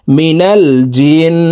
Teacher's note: জিম নুন জের জিন ওয়াজিব গুন্না এই জিম তাশদ নুনের সাথে নাকের পাশে থেকে তিন সেকেন্ড পরিমাণ গুন্না করে ধরে রাখবো